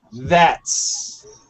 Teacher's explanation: So the first TH, there's some vibration.